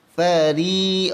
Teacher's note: ra nipis di samping tu panjangkan dengan kadar dua harakat